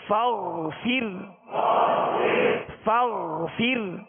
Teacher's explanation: فا را زیر فر فغفر فغفر. را کو باریک پڑھیں گے اور غائن کو پر پڑھیں گے.